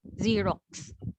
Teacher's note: X here is the combination of the sound of K and S